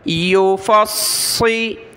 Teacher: یا پیش یو، فا صاد زبر فص، صاد زیر سی، فصی، سخت کریں گے صاد کو اور موٹا پڑھنا ہے ، اس کی جگہ ہم نے سین نہیں پڑھنا، ٹھیک ہے، · باریک ہوتا ہے سین اور صاد موٹا ہوتا ہے